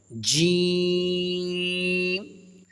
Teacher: جیم کا پڑھنے کا درست طریقہ یہ ہے کہ اپنی زبان کا درمیان کا حصہ اوپر والے درمیان کے حصے میں ٹچ کریں گے تو جیم ادا ہوگا